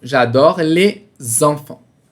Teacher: Aí a gente vai juntar o les com enfant.